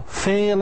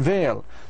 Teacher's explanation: f is voiceless and V is voiced